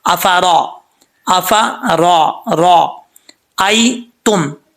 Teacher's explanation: रा के ऊपर ज़बर हो तो रा पुर पढ़ा जाता है